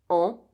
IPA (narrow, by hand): ɑ̃